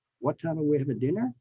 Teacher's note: in some cases, you would raise the tone or the pitch at the end